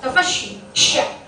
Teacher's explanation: Nyebar anginnya itu sifat huruf sha.